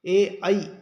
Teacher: इनका उच्चारण स्थान कंठ और तालु होता है, ये दोनों जगह से इसका उच्चारण किया जाता है